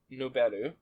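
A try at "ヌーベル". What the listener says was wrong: Well, to be fair, it's not Nuberu, it's Nuberu. They hold it a little bit. Well, I think if we're distinguishing between novel and nouvelle,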